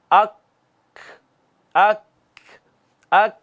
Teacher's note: ज़बान की जड़ से थोड़ा सा आगे आए हैं, वो जो ज़बान का हिस्सा है वो ऊपर तालू को लगा है जो सख्त तालू था, यहां से काफ अदा हुआ है।